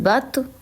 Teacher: تو پہ ہم نے تھوڑا سا ہلا کے پڑھا کیونکہ حروف قلقلہ ہے اور ساکن ہے